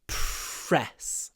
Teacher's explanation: we aspirate the p a lot. So I sometimes write it like this.